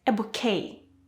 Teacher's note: please note there is no t sound it's a french word